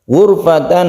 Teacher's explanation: ra yang sukun sebelumnya ada dhammah kita tebalkan